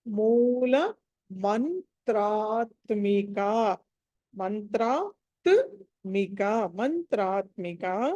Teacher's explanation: మ తర్వాత అనుస్వారం ఉంది తర్వాత త ఉంది కాబట్టి అక్కడ పంచమాక్షరం న రావాలి